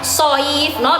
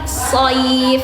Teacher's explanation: Tapi kayak tadi soif gitu. Seakan-akan dia pangkal lidahnya terangkat. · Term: huruf isti'ala